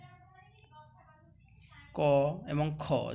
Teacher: उच्चारण समय स्वरतंती कंपित होई न थाए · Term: अघोष व्यंजन